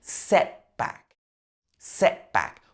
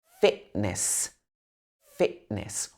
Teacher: most of the time these kind of words would have the glottal stop